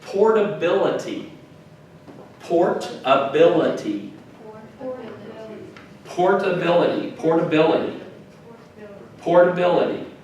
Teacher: And that emphasis is on the bill.